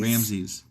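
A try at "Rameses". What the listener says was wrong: No, it's not Ramsy's. Whatever. There's an extra e in there. It's Rammeses or Ram Rammesus.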